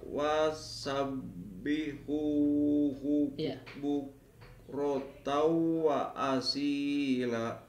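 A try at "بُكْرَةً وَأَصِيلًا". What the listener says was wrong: La panjang kedua kan?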